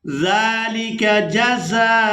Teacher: یہاں نون مشدد پر غنہ کریں گے اور یہاں پر بھی ہم نے واو کو ادا نہیں کرنا، اس کے اوپر جو حمزہ ہے اور حمزہ کے اوپر جو آپ لوگ حرکت دیکھ رہے ہیں یعنی پیش کو دیکھ رہے ہیں، تو یہ حمزہ کے اوپر ہے، یہاں پر واو ادا نہیں کی جائے گی، حمزہ کو ادا کریں گے پیش کے ساتھ